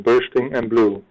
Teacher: the repetition of consonant sounds in bursting and blue, which are both bilabial stops